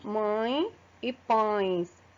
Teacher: No exemplo de ditongo nasal, eu trouxe dois exemplos, mãe e pães. Vejam que o som sai tanto pela boca como pelo nariz.